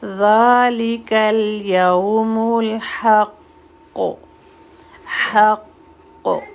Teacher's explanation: اس میں جو حق ہے یہ ہیوی ہے، قوف ہیوی، جتنے بھی گرین لیٹر نظر آ رہے ہیں وہ سب ہیوی ہیں۔